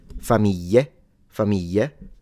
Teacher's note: Or you pronounce it in the southern way, which is a Y